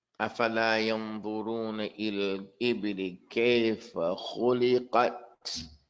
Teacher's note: The ta, no sound, but the air flows.